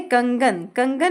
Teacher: कंगन में हमने इस अनुस्वार को प्रोनाउंस किया है ग के रूप में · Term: अंग